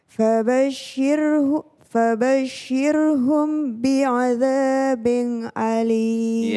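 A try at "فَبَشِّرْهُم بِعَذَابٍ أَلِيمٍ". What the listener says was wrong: Ya, kalau izhar harus jelas. Ini izhar. Bi'adzabin nun. Bi'adzabin alim. Dengung dulu. Mim ketemu ba.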